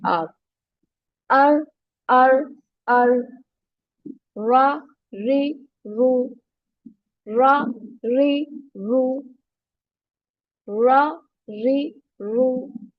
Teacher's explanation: it is like र but without making your lips round